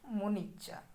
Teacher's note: मुनि में जो ई है और इच्छा में जो ई है, ये दोनों ई मिलकर कैसी हो गई? एक दीर्घ ई हो गई।